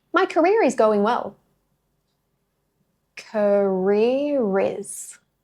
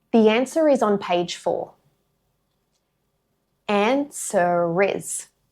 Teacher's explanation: The R at the end of each word links straight into the vowel sound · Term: linking R